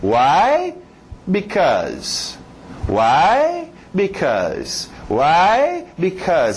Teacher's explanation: Why sempre vai subir. É sempre usado para fazer pergunta.